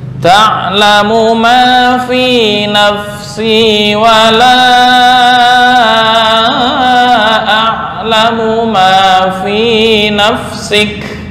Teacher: Ma di sini hanya 2 harokat atau 1 alif, jangan lebih.